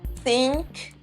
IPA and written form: θɪŋk (सोचें)